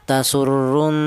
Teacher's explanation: Dibaca ghunah alasannya yaitu ada huruf nun yang bertasdid.